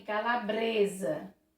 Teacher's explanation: o s entre vogais tem som de z